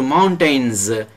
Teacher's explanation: N is voiced sound. After voiced sound, S is pronounced as z.